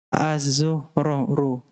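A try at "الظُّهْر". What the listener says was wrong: al-dhuhru. Ulangi Mas. Al-dhuhru. Dha. Bukan zo. Ngucapin huruf dha gimana? Lidah ujungnya ditempelkan ke gigi atas.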